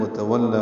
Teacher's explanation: واو کو لام سے ملانا ہے. واو ہونٹوں کے نا تمام گول کرنے سے ادا ہوتی ہے.